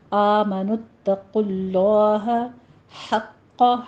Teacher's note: آمنوا اتقوا اللہ، نت نہیں کہنا، نت، تا باریک رکھیے گا، آگے قوف کو پر پڑھنا ہے، آگے لفظ جلالہ بھی پر پڑھنا ہے۔ آمنوا اتقوا اللہ حق، ہا وسط حلق سے ادا کریں گے، قوف کے اوپر تشدید ہے، قوف کو پر بھی پڑھنا ہے۔